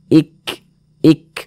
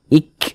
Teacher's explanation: Jadi ketika huruf kaf ini dia sukun, maka ada nafas yang mengalir. Tapi dia seperti percikan saja. Ik, seperti itu. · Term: sifat hamz